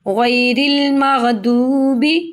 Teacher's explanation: غین کو پر پڑھیں گے، دوات کو بھی پر پڑا جائے گا، واو مدہ ہے، واو ساکن سے پہلے پیش ہے تو واو مدہ، با کے نیچے زیر ہے.